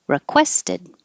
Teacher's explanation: the re is not stressed so it's likely to change to ra